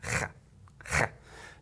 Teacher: use my tongue at the top of the roof of my mouth to make that rattling sound